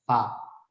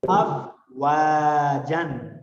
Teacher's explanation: جس طرح یہ ہونٹ ہوتا ہے اندرونی سائڈ اس کے فا اوپر سے دانت آپ نیچے لا کے لگائیں تو فا ادا ہوئے گا